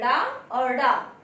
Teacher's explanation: इनके उच्चारण में जीभ ऊपर उठकर झटके के साथ नीचे गिरती है, अर्थात इन 2 वर्णों का उच्चारण करते में हमारी जीह्वा तालु का स्पर्श करते हुए तुरंत नीचे गिरती है, इसलिए इसे हम क्या कहते हैं? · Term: उच्छिष्ट व्यंजन